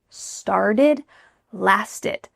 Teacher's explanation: So both past tense verbs, started, lasted, have the same type of pronunciation. The T's changing to a D, and that final ED ending is going to sound like id.